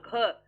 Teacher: घ को बोलने में ज्यादा मेहनत और ज्यादा हवा मुख में से बाहर आ रही है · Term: महाप्राण